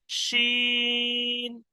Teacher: এটা জিভের মাঝখান দিয়ে উচ্চারণ হয় তালবের স্বর মতো, শিন, তিন আলিফ টান দিয়ে।